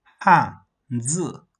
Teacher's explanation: this is a falling tone and this is a falling tone, so it's read as 汉 字